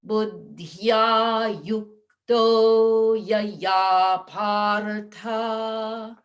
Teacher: I rushed through the O in yukto. It should be longer than what I just did.